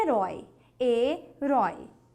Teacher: esse Oi é um ditongo aberto